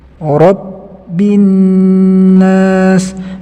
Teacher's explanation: huruf ba yang berharokat tasdid itu dibaca tertahan, suaranya terdengar seperti tertahan. Tidak boleh kita baca dengan menjalankannya seperti ini, bi rabbin, rabbin, tapi harus tertahan.